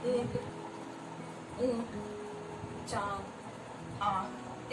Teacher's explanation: इसका उच्चारण करते समय नाक और मुंह दोनों से हवा निकलती है। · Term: चंद्रबिंदु